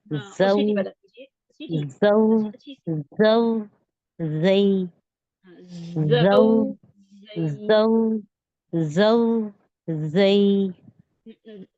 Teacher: दांत जो है ना आपके दोनों ऊपर नीचे के दांत करीब करीब आ जाएंगे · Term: हरूफ सफीरी